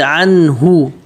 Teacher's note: اس نون پر غنہ نہیں ہوگا کیونکہ نون ساکن کے بعد حروف حلقی آ رہا ہے